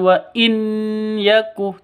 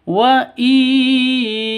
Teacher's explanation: Cara bacanya masuk ke ya disertai dengung 2 ketukan. Karena idgham bi gunnah, masuk dengan dengung begitu.